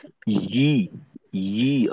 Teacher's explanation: ইয়ার উচ্চারণটা হয় ই, ই, অর্থাৎ জিহ্বার মধ্যখানে এবং উপরের তালু ব্যবহারের মাধ্যমে ইয়ার উচ্চারণটা তৈরি হয়।